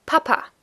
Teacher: the emphasis is on the first a